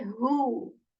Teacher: This is from the six letters of throat. This ha is articulated from the portion of throat that is near to the chest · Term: letter of throat